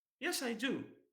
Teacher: the intonation changes into falling intonation when of course confirming